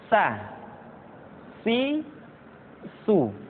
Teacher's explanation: Berikutnya huruf sa diucapkan sebagaimana kita mengucapkan huruf sa, yaitu ujung lidah di antara dua gigi seri kita.